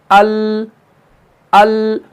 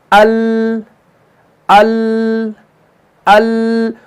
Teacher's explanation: जुबान का जो तरफ है, यानी तरफ लिसान जो है, ये दवाहिक से लेकर थनाया तक के मुकाबिल मसड़ों से लग जाती है, तब जाके लाम अदा होता है।